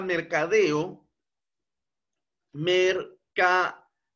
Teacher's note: el mayor impulso de voz se encuentra precisamente en la última sílaba, deo. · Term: acento prosódico